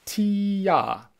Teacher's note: as you say tia your tongue starts high and then it drops down low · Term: tongue voicing